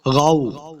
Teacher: غین حروف مستعلیہ سے ہے، اس کو موٹا پڑھنا ہے